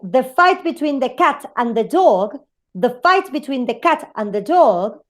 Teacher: If I say the fight between the cat and the dog, I am saying that fight, cat, and dog are the most important words in the sentence. So they are stressed.